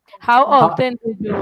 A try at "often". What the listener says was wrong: No, how often? Forget about T.